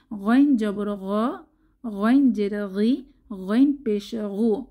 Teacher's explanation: গাইনের মাখরাজ হচ্ছে কণ্ঠনালীর শেষ ভাগ থেকে